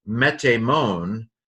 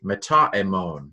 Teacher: the alpha elided because the next word began with a vowel